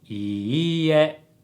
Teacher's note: Now, he said い い え with a high, low, low pitch pattern, but the correct pitch pattern of standard Japanese is い い え low, high, high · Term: pitch accent